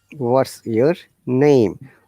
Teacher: We're stressing on name, and name is here the content word.